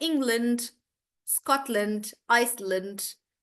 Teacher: all the countries that end in land, you don't pronounce it as land. You again make it really short.